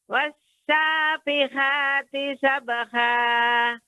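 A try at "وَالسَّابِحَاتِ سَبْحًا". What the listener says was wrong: Sabha. Lebih halus lagi Ibu pengucapan hanya. Sabha. Ha.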